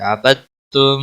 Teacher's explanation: عبدتم دال یہاں نہیں پڑھا جائے گا ، عبدتم کیونکہ ساکن حرف کے بعد جب تشدید والا حرف